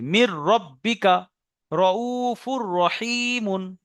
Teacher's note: তানবিনকে রর সঙ্গে মিলিয়ে বিনা গুণনায় পড়তে হবে